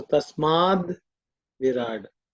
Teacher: So in the word Tasmat, it and vi join, and the it becomes id. So ta becomes the because of sandhi.